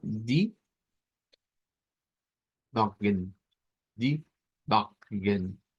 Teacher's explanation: Lo que cambia es que no hay schwa, sino que una N al final y pues suena la O siempre y es con el sonido más vibrante, ¿verdad?